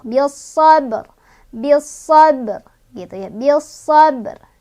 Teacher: ro-nya tuh tetap dibaca tapi cuman ujung ro-nya aja. Jadi ini adalah waqaf isyarah.